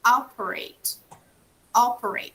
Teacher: so the stress is in the beginning